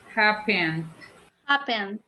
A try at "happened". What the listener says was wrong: Yes, give emphasis to the D. Even if you exaggerate it at the beginning, eventually it will come naturally.